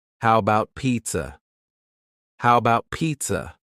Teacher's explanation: The first A in the word about is gone. It's just missing.